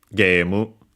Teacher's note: Some still pronounce it as A, but yeah, in English words it became straight up long E with the additional then U at the end for the mu, for the M that can stay on its own, accented on the ge, just like in English game, gemu, high and everything else low.